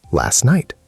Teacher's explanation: In fast speech, it often sounds like last night. The T disappears. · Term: elision